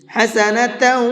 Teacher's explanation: حسنۃ، تا کے اوپر تنوین ہے اور تنوین کے بعد میں واو ہے، اور تنوین کے بعد میں واو آتا ہے تو وہاں پر بھی غنہ کر کے پڑھتے ہیں